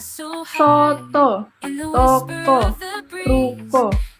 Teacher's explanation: vokal sedang belakang bulat vokal ini dibentuk dengan kedua bibir agak maju ke depan dan agak membulat tetapi kurang bundar daripada u